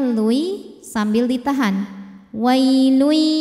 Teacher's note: tanwin dimasukkan atau dileburkan ke ya disertai bunyi dengung jadi ini bunyinya Lui sambil ditahan wailui masuk dengan dengung dari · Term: Idam ah yang naqis